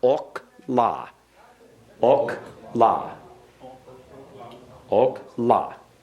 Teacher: Remember, the accent goes on the final syllable.